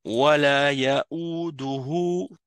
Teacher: Il y a un petit waw après le ha. Ça veut dire que tu dois prolonger encore le hu.